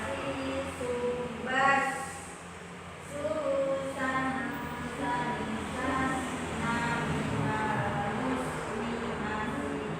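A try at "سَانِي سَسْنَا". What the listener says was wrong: Masih sama. Jadi gampangnya gini loh. Jadi gampangnya gini. Tambahin aja s-nya gitu. Nah, jadi tambahin aja s-nya. Jadi sasi subas. Tapi jangan banyak-banyak.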